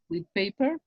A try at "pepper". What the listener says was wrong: pepper. No pay. Pepper.